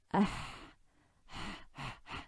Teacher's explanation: make sure this doesn't sound like a kha. This isn't a kha, it's a ha. The air just runs.